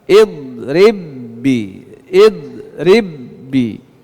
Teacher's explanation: itu memasukkan ba yang pertama ke dalam ba yang kedua karena masuk maka tidak ada bunyi pantulan walaupun ba ini hurufulqalah jangan dibaca idrib biasa Karena kalau dipantulkan berarti tidak am idgham